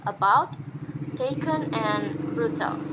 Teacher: Mid-central unrounded natural vowels is made in three ways. That is, it's uttered by elevating the tongue in the middle position. The central part of the tongue is used to articulate these sounds, and the lip shapes when making these vowels is unrounded natural.